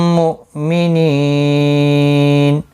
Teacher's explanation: وقف کی صورت میں نون ساکن پڑھا جائے گا. وقف بالاسکان ہوگا، مد العارض وقفی ہوگا، 3 سے 5 الف کی مقدار کے برابر کھینچ کر وقف کریں گے · حمزہ ساکن کو جھٹکے کے ساتھ پڑھیں گے. نی یا مدہ ہے، ایک الف کی مقدار کے برابر کھینچ کر پڑھیں گے. وقف کی صورت میں نون ساکن پڑھا جائے گا.